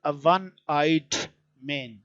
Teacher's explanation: Because one starts not with a vowel sound, it starts with a consonant sound va, which is w.